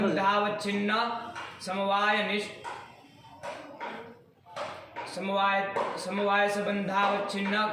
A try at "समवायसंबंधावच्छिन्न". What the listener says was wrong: ये संबंधा कहाँ से तुम्हारा आता है?